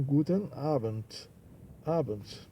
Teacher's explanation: E o D final soando como T.